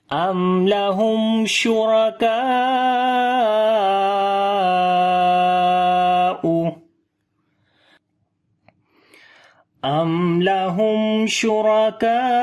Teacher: After the meme sakin there is lam, we make izhar shafavi, the clear sound of meme without gunna